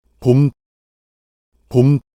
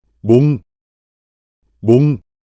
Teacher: As a result, when Koreans pronounce the initial consonant mium, learners of Korean tend to hear the bilabial sound biup, which has the same place and manner of articulation, rather than the nasal consonant mium